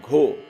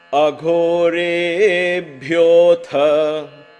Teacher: So Gho and Bhyo and Tha, there is a lot of aspirations and the Ha comes along. So a lot of Mahaprana is there in this.